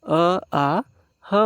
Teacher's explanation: ಅ ಆ ಹ ಮತ್ತು ವಿಸರ್ಗಗಳು ಏನಾಗ್ತವ ಕಂಠದಲ್ಲಿ ಹುಟ್ಟಕೊಳ್ತವ